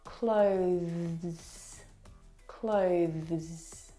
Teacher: the th sound is very very soft it is definitely still there it needs to sound different from the verb clothes okay which